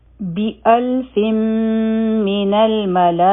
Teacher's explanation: بی یو حرکه، حمزه او لام به یوځای شي، دا بشي ال، او د فا د لاندې کسرتین دي، مخکې میم مشدد دی، نو دلته کې به مونږه ادغام کوو، یعنی دا تنوین چې دی 2 زیرونه دا به مونږ د میم سره یوځای کوو، او د ادغام ته د غنه سره ادغام وایي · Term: ادغام د غنه سره